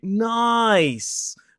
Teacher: So instead of just saying nice, I might say nice and really elongate that vowel.